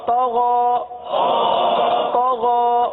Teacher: طا کو پر پڑھیں گے. طا حروف مستعلیہ میں سے ہے